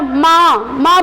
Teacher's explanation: माँ बोलते हैं तो नाक का सहारा लेना पड़ता है। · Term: नासिका